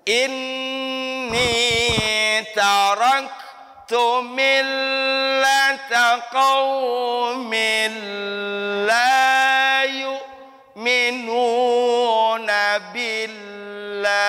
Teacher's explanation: Nah, dari qaumil la itu lamnya ditahan dulu.